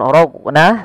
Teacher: huruf qofnya ada bacaan qalqalah yang di mana dia harus dipantulkan